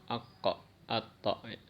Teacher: Kalau qaf sama to itu mantunya ke o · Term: qalqalah